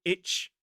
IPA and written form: ɪtʃ (-wich)